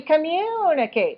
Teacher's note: We have to stress communicate. So the second syllable is longer.